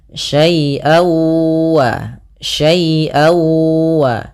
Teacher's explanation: Yaitu suara tanwinnya masuk kepada huruf wau. Jadi awalnya syaian ketemu wau dibaca syai wa syai waa.